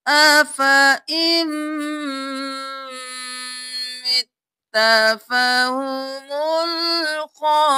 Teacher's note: کیا افا، افا ام نہیں کرنا، أَفَإِن مِتَّ، ان نہیں کرنا، حمزہ کو میم کے ساتھ ملانا ہے، نون کو چھوڑ دینا ہے، میم پر تشدید ہے غنہ بھی کریں